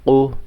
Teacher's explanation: তো এখানে কফটা যখন আপনি পড়বেন আপনার মুখ থেকে অবশ্যই বাতাস বের হবে।